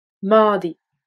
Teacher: Le T de mat se prononce D car il est suivi de la voyelle E.